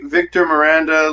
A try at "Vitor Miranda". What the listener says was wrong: Isn't that Vitor Miranda, not Victor?